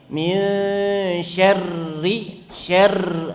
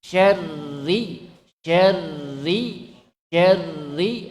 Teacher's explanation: Karena roknya bertasydid. Tapi walaupun demikian getarannya nggak boleh banyak. Walaupun dia bertasydid.